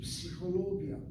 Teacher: So when a word like psychologia has 1 syllable, psi, ho is the 2nd syllable, lo is the 3rd syllable, gi is the 4th syllable, ya is the 5th syllable. 5 syllables from psychologia, and syllable number 3 is accented.